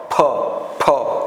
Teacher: દ અને ધ પછી આવે છે ઓષ્ટ ઓષ્ઠ એટલે હોઠ હોઠ હોઠ બીડે અને ખુલે ત્યારે જ આ વ્યંજનને બોલી શકીએ છીએ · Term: સ્ફોટક વ્યંજન